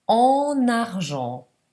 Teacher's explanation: Si fa anche qua la liaison. Prima la nasale en, poi prendo la n che collego con la vocale.